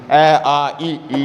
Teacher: ऐसे स्वर वर्ण जिनका उच्चारण करते समय हमारे होठों की आकृति गोलाकार नहीं होती है वे अवता का या अव्रत मुखी स्वर कहलाते हैं बाकी बच्चे